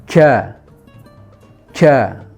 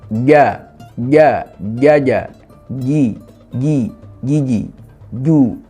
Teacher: Jadi jangan sampai kemudian jim ini keluar hamas, karena huruf jim itu sifatnya jahar.